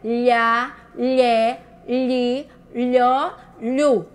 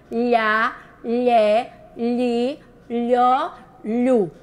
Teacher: A língua vai bater no céu palatino ou no céu da boca, popularmente chamando, quando a gente fala o LH.